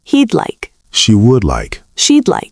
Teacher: Sometimes for new learners, it's hard to hear. It sounds like a tiny D sound at the end of I.